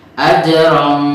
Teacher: Tapi kalau ini membacanya dia seperti ifhar, tapi dengungnya di atas, lidahnya di atas langit-langit. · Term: ikhfa